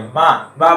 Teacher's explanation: माँ बोलेंगे तो नाक झनझन आएगा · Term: अनुनासिक वर्ण